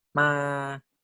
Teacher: so the mid tone can be represented by three three